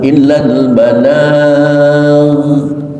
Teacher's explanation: jangan sampai keluar pantulan qalqalah dari ghin yang dimatikan karena ghin bukanlah huruf qalqalah.